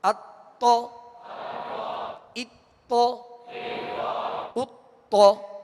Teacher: حمزہ باریک پڑھیں گے اور تو کو پر پڑھیں گے، اتو، مگر ہونٹوں کو گول نہیں کریں گے۔